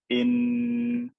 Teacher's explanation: if I pronounce a noon regularly, my tongue is going to go up and hit the top of my mouth.